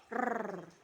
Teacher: ialah e konsonan getar atau Tril yaitu konsonan yang dihasilkan dengan mendekatkan dan menjauhkan lidah ke alveulum dengan cepat dan berulang-ulang sehingga udara bergetar